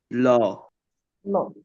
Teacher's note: ল উচ্চারণ করার সময় হচ্ছে গিয়ে জিহ্বার দুই পাশ থেকে বাতাস বের হয়ে যায় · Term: পার্শ্বিক বর্ণ